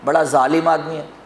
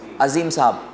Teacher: اردو میں جیسے اگر کسی کو ظالم بولنا ہو تو اس میں دیکھیے زا ہی ادا کرے گا